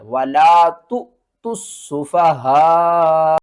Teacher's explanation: یہاں پر ہم نے تا کو حمزہ کے ساتھ ملانا ہے، اور حمزہ کو ہم نے جھٹکے کے ساتھ پڑھنا ہے